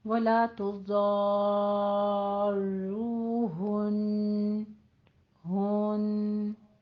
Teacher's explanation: ہن کہہ کے وقف نہیں کرنا، ہن غنے کے ساتھ وقف کرنا ہے، بہت لمبا بھی نہیں کہ پورا غنہ ادا کرنا ہے آپ نے، لیکن اتنا ہو کہ تجدید والا حرف جو ہے وہ ادا ہو جائے۔